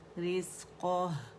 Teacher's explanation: آخر میں جو ہا ہے نا, اس کو واضح کرنا ضروری ہے, ہا ساکنہ کو